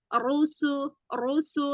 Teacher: waktu ro kan kita angkat pangkal lidah